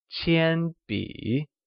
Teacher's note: Qiānbǐ is pronounced with a high level tone on a and a falling rising tone on i